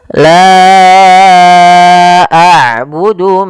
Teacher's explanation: Maka hamzahnya di lain kata. Maka panjangnya la kita panjangkan sepanjang empat harakat dan kita hukumi bacaannya dengan bacaan mad jaiz munfasil.